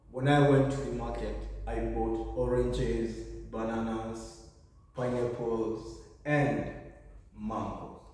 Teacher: in the case of listing, it's going to be rising all through, but at the end, we're going to have a falling.